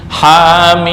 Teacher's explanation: Ha 2 harokat, mim 6 harokat.